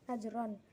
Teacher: qalqalah sugro karena ada huruf qalqalah jim sukun asli